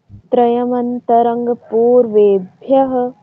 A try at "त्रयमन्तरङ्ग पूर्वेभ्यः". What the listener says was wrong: बहुत बढ़िया जी।